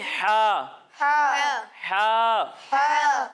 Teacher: جب ہم ہا کی ادائیگی کریں گے تو اسے حلق کے درمیانے حصے سے پڑھیں گے